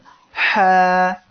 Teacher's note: চিকুন করে যে হাটা উচ্চারণ হবে সেটা হলো হলকের মধ্যখান থেকে, তার উচ্চারণ হবে এমন হা।